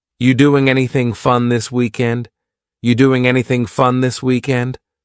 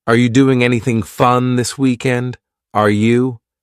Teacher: But the word are, it's on vacation. It's just gone somewhere.